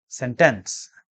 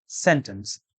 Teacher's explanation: In India and Pakistan, due to mother tongue interference, generally this term is pronounced as sentence. Stress is placed on the second syllable. The correct pronunciation is sentence. · The correct pronunciation is sentence. Stress is on the first syllable. When we speak or when we write, we use words, and generally we use these words in groups, like a little Jack Homer sat in a corner.